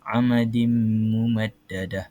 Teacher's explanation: Apabila ada tanwin dia bertemu dengan huruf yang bersabdu dia perlu bunyikan yang kedua ni mim ni dengan dengung kita kena hold dia kita kena tahan dengungan dia selama tiga harakat